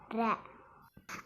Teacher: இந்த ர சொல்லும்போது நம்மளோட நாக்கு மேலெண்ணத்தோட நுனி பகுதியை தொடணும். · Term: இடையின ரகரம்